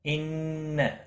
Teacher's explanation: نون مشدد پر گنہ ہوگا